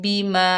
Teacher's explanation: मीम के ऊपर ज़बर, आगे अलिफ खाली है, ये अलिफ मद्दा है और ऊपर छोटी मद भी आ रही है, 2 कलमों के दरमियान है, तो यहाँ मद बनेगी मद मुनफसिल, 3 अलिफ की मिकदार खींच कर पढ़ेंगे